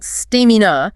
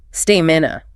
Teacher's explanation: The stress is definitively on the first syllable, stamina. Conversely, endurance places the heavy stress on the second syllable.